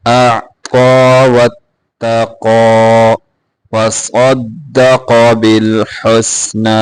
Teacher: صاد قاف دونوں کو موٹا کریں گے